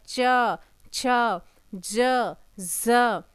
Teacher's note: तो स्पर्श संघर्षी कहते हैं बच्चे, जो च वर्ग होता है ये स्पर्श व्यंजन तो होता है, लेकिन जब हम इसे बोलते हैं तब घर्षण करते हुए निकलता, च छ ज ज होता है, नहीं संघर्षण हो रहा है।